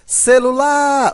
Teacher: na palavra celular, as sílabas átonas são o sé e o lu